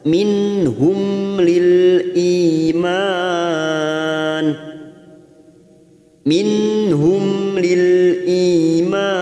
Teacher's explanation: Mim sukun bertemu lam idhar safawi kita baca jelas tanpa mendengung.